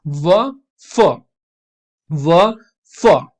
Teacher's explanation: Lips और दांतों के फ्रिक्शन से जो निकलती हैं वो लेबियोडेंटल कहलाती हैं। Lower lip and upper teeth, व, फ, व, फ, ठीक है।